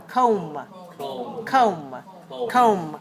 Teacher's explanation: pronounce the b the last letter we pronounce is the um don't forget the o o vowel this is this one is a glide vowel